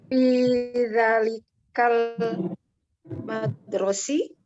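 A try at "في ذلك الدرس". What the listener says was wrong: Kalau madrosi itu ada mim. Kalau ini hanya huruf dal, ro, sin. Berarti fidzalikat darsi ya, fidzalikat darsi.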